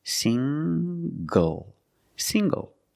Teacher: the NG makes the nasal um sound plus the hard G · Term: nasal sound plus the hard